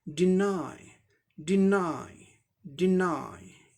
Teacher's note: डी का डॉ sound हो जाएगा, ई का ई short and quick ई sound होगा, और एन का नौ साउंड होगा, वाई का आई साउंड होगा, ये आई साउंड का सिंबल है। तो और ये वर्ब है इसीलिए सेकेंड सिलेबल पे स्ट्रेस है, इसे जोर देकर बोलना है